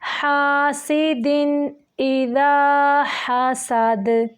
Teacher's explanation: جھٹکے سے پڑھیں گے، دال کو نرم طریقے سے پڑھیں گے، ہا کو واضح اور سین کو سیٹی کے ساتھ، اور دال کو رکتے ہوئے یعنی ساکن کرتے ہوئے کلکلا کریں گے · حمزہ کو جھٹکے سے پڑھیں گے، دال کو نرم طریقے سے پڑھیں گے